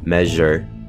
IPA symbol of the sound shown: ʒ